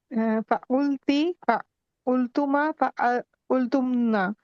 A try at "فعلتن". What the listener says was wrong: فعلتن، عين کی حرکت نہیں چینج کرنی، فعلتن.